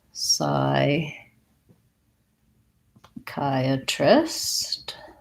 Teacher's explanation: Has second syllable stress. That CH just sounds like the K sound. And we have the diphthong I, chi, psychi.